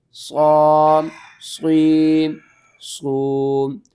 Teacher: صاد کو آپ نے موٹا کر کے پڑھنا ہے